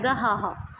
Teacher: ਸਵਰਯੰਤਰ ਮੁੱਖ ਤੋਂ ਉਚਾਰੀ ਜਾਣ ਵਾਲੀ ਧੁਨੀ ਜਿਹੜੀ ਹ ਉਹ ਸੁਰਤੰਤਰੀ ਅਖਵਾਉਂਦੀ ਹੈ